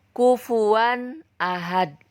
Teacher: Nah, bagaimana cara membacanya? Nun mati atau tanwin dibaca jelas dalam idhar ini. Jadi jelas kedengaran bunyi N-nya.